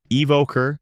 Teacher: In America, people say evoker with emphasis on the second syllable. Evoker, making it sound clear and firm. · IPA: /ɪˈvoʊ.kər/